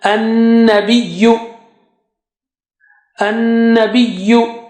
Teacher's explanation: Noon has shadda there, so it will be having gunna.